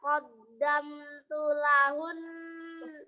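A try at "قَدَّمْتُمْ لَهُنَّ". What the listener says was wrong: Tum, tumnya jelas.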